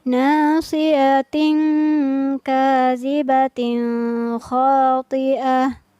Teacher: Kemudian huruf yang terakhir kembali ada huruf ta marbutoh, maka kita baca seolah-olah menjadi H yang bersukun